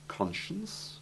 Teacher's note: It has the SH sound in conscience, possibly because this is the sound it has in the connected words conscious, unconscious, and conscientious.